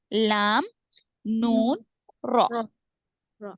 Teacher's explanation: لام نون را زبان کی نوک اوپر تالو کو لگنے سے ادا ہوتے ہیں